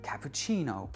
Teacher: Donc quand vous avez un mot étranger, comme par exemple cappuccino, on a on accentue comme en italien sur chi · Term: accent tonique